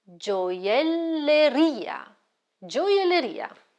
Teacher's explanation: The stress is on the last syllable, ria.